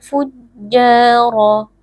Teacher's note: huruf ro Huruf tebal dibaca dengan mengangkat pangkal lidah